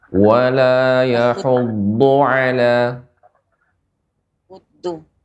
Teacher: huruf dot, do, dua tepi lidah atau salah satunya mengenai gigi geram atas.